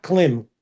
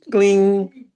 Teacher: because of Anuswar, the M sound is NG sound